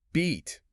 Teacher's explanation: To say beat, your tongue is high, it's pushed forward, and your facial muscles are incredibly tense. You almost have to exaggerate a wide smile. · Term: long E sound